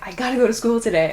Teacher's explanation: of got and two it's not a real word uh gotta is just the sound that we make when we say got to very quickly